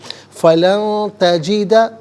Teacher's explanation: وَمَن یضلل فَلَن تَجِدَ، لن میں نون ساکن ہے، اس کے بعد تجدہ میں تا حرف اخفاء آ رہا ہے، تو نون ساکن کو اخفاء کے ساتھ پڑھیں گے. اخفاء کہتے ہیں ناک میں آواز لے جا کر گنگنانا